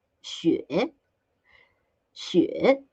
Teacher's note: It's the third tone, so we do a down dip and up.